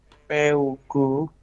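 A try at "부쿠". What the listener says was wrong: B, bukan P ya. Ini karena di awal tetap B ya. Jadi nanti ketika ada spasi itu artinya adalah di awal ya, awal kata.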